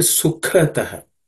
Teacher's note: The second letter ka is aspirated. Second letter in the ka class of sound consonants, ka varga consonants.